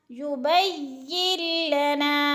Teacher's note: نون ساکن کے بعد آگے لام مشدد آ گئی ہے تو نون ساکن کو نہیں پڑھیں گے